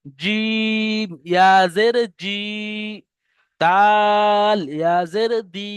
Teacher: যে প্রতিটা অক্ষরের যে টান, যেমন জিম তিন আলিফ টান দিয়ে পড়তে হয়, দাল তিন আলিফ টান দিয়ে পড়তে হয়, সেই টানটাকে কিন্তু বাকি রাখতে হবে।